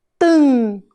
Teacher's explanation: o M perto da vogal, no final da sílaba, também faz o som nasal